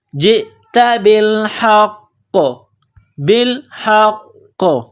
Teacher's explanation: جب یہاں سٹاپ کریں گے تو قاف کو سائلنٹ کریں گے، قاف جب ساکن ہو جائے گی تو یہاں پر قلقلہ کیا جائے گا